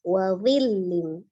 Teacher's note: Akhir ayat 30 wa dhillim ya, ada huruf dha, ujung lidah bertemu dengan ujung gigi seri atas sama seperti huruf dzal tapi dia tebal, isti'la ya.